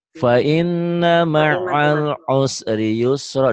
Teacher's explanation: Dua fathah dibaca satu jika dihentikan.